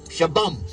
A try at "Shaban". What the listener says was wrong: no it's with n shaban